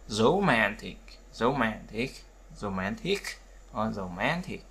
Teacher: Thì trọng âm nhấn vào âm man